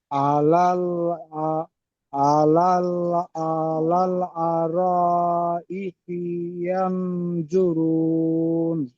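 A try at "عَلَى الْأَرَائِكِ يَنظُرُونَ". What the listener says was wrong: ই কি, কাপটা একটু টান হয়ে যাচ্ছে, টান হবে না। আলাল আর, ই কি, ই কি।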